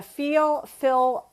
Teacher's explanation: And it's that L. It's called neutralization before L, which causes vowels to kind of fall in together. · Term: feel fill merger